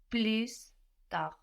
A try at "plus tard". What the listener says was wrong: Almost. We don't have the S though. So again, we don't pronounce that final consonant now. We have plus written, like plus in English, but we pronounce plus.